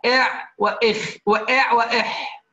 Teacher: وسط الحلق العين والحاء